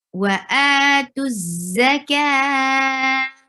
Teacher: And when you will stop here, look, this is the stop sign. If you will stop, you will change this circle ta into ha.